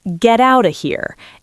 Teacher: a Londoner might swallow the T sounds. · It sounds a bit more clipped, but we still link. We still flow. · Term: glottle stop